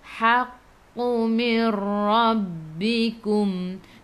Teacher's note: Nun tak ada sukun, tengok selepasnya ada ra, di atasnya ada sabdu. Idgham bila gunnah, masuk tanpa dengung.